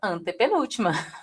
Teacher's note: a palavra antepenúltima é uma palavra proparoxítona, porque a sílaba tônica está na posição três